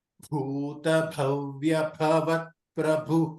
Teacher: ಭೂತ ಮಹಾಪ್ರಾಣ ಇದೆ, ಭವ್ಯ ಮಹಾಪ್ರಾಣ ಇದೆ, ಅಂದ್ರೆ ಎಲ್ಲಾ ಭಾಗಳಿಗೆ ಮಹಾಪ್ರಾಣ ಇದೆ.